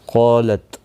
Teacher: قالت، قاف اور الف دونوں پر پڑھے جائیں گے. قاف مستعلیہ ہے اس لیے پر پڑھا جائے گا. اس کے ساتھ میں الف بھی آیا ہے، یہ بھی پر پڑھا جائے گا.